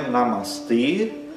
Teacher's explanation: Ele é um E fechado, porque sempre o E em sânscrito é fechado. Então é Namastê e esse E é longo.